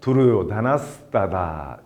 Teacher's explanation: 끊어 읽을 때는 두르요다나 하 미사르가 따다 이렇게 읽었죠. 이제 이어 읽으면은 미사르가가 스로 바뀌어서 두르요다나스 따다 이렇게 됩니다.